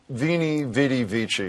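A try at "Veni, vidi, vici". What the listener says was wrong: Well, you're kind of pronouncing it wrong. It's actually, it's Wainy Wadey Vici. The V is a W.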